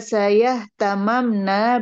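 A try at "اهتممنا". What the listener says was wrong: Ihtalalna, ihtamamna. Gak boleh lebur mimnya.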